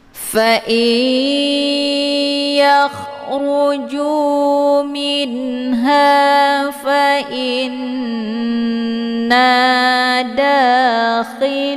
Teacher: nunnya dimasukkan ke dalam huruf ya dengan cara ditekan kemudian ditahan lebih kurang 2 harokat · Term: idgham ma'al ghunnah